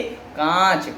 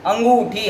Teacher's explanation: इसका उच्चारण करते समय ध्वनि नाक और मुंह दोनों से ही निकलती है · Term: अनुनासिक